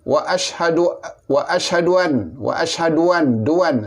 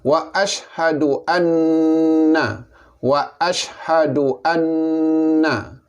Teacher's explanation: Wajib didengungkan. Maka dengungnya 2 harkat. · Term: wajibal gunah